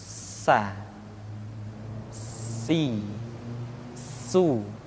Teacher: ketika kita mengucapkan huruf sa ada suara tambahan yang menyerupai dengan suara belalang. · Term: sifat as-safir